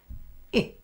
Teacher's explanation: Now to glide to I, move the tongue high towards the palate, moving your jaw to fairly closed and your lips slightly spread. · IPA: /ɪ/